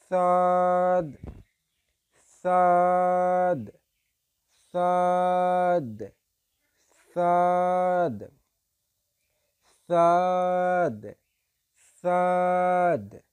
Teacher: জিহ্বার আগা উপরের দুই দাঁতের আগার সঙ্গে লাগাতে হবে। জিহ্বার আগা উপরের দুই দাঁতের আগার সঙ্গে লাগিয়ে উচ্চারিত হবে